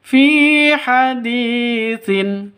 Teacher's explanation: Fi panjang 2 ketukan karena ada ya mati diawali dengan kasroh, mad asli atau mad tabi'i.